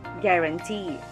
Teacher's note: first syllable is ga second gram and third is t the word has its stress on the third and last syllable